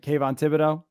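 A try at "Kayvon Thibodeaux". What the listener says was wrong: You threw an extra R in there.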